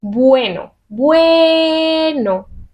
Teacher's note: Es la E la que tiene la fuerza y la E ya es fuerte, así que no se separa. Bueno. No se acentúa ni nada de nada.